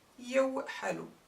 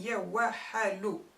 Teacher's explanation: the fatha on the waaw just glides to let a sukun in its place for a smoother pronunciation